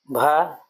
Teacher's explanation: हिंदी की स्पर्श घोष महाप्राण ओष्ठ व्यंजन ध्वनि है